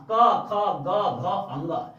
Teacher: क वर्ग का उच्चारण हम कंठ से करते हैं। तो क वर्ग में जो यू आ जाएगा ना, क ख ग घ अंग, इस सभी का उच्चारण हम कंठिया से करेंगे।